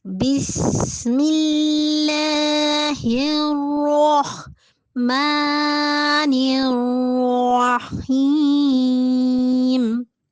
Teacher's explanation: را کو ہم نے گول پڑھنا ہے، پر پڑھنا ہے